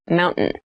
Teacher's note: in fast speech, it sounds like mountain. The T sound is reduced.